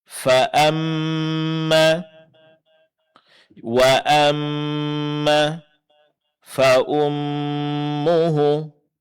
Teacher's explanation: dengung ya ada pada huruf mim yang bertasydid